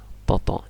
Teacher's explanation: kalau th dia sama ujungnya ta tapi Tengah lidahnya naik